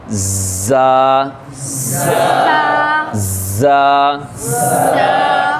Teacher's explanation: سختی سے ملا کے سیٹی کی سی آواز ہلکی سی، زا، زا، اس میں تھوڑی سی سخت آواز آئے، لال کے اندر بالکل نرم آواز ہو، لال، ٹھیک ہے، لیکن زا کے اندر سخت آواز ہو، زا۔